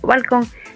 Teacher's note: balcón tiene mayor intensidad de voz en la última sílaba dentro de la palabra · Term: acento